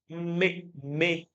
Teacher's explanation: E o me também tem um pouquinho de nasalidade.